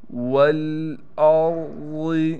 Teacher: واو کو لام سے ملائیں گے، یہ الف نہیں پڑھا جائے گا جب ہم واو کو لام سے ملائیں گے